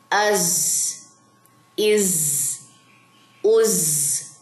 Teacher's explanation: زا میں سیٹی ہے تو آپ نے سیٹی بھی ادا کرنی ہے. اس کو ایسے نہیں پڑھنا از از, نو, بالکل سلو.